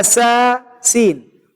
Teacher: أقصى اللسان منخفض، وهناك مجال كبير يمر منه الصوت حتى يكون الحرف مرققا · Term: السين